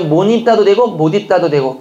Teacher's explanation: 연음해도 되고 니은 첨가해도 된다